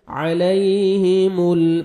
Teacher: ع اور یا لین ہے، نرمی سے ادا کریں گے